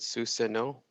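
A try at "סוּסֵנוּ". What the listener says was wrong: Yes, and here you're very close. So you said susano. No would be a dot on the top. There's a dot on the side. So it's su say nu. Susenu. Susay. Here's the a nu, and here's the sus. So what you do is you take these two dots and you stick them directly underneath right here, and they give you susenu. Susenu.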